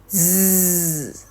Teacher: Ketika Anda mengucapkan bunyi S, tidak ada getaran yang Anda rasakan di tenggorokan Anda. Sedangkan ketika Anda mengucapkan bunyi Z, maka Anda akan merasakan getaran di pita suara Anda atau di tenggorokan Anda